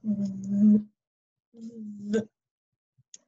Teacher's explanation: It's the voiced. It makes your lips a little tingly and it makes your throat a little shaky